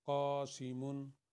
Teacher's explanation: قاسمن کے اوپر جو قاف ہے یہ 2 حرکت کے برابر پڑھا جائے گا، باقی سین اور میم ایک حرکت کے برابر۔